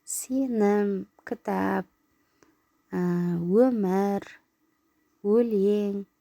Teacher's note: Ал жіңішке дауысты дыбыстар болса, е, ө әріптері болатын болса, онда сөз жіңішке естіледі екен.